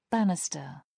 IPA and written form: ˈbænɪstə (banister)